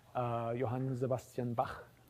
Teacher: Languages like German say that's one of the sounds that they write with the letters C and H at the end of composers' names, like Bach, right? Johann Sebastian Bach, his name ends with a velar fricative.